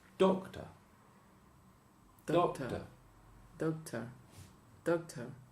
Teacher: this schwa is a light syllable okay it is the second syllable but is unstressed · It is the second syllable, but it's unstressed, and also the schwa is less than a normal syllable. So it's doctor.